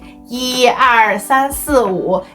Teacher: When 一 is used alone or as a number, its tone does not change.